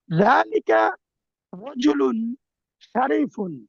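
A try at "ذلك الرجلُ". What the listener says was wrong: এই যে আলিফ লাম রয়ে গেছে, জালিকার রাজুলু উচ্চারণে আসবে।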